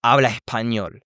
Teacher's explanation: it's not about getting rid of the S, but rather replacing it with an H sound